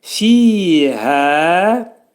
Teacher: Burada hə iki səs qədər qaldırılacaq, çünki hədən sonra da təbi mədli hərf əlif gəlir. Hə hərfinin məxrəci boğazın aşağısındadır. Heç vaxt bunu gərək boğazın ortasına salmaq olmaz.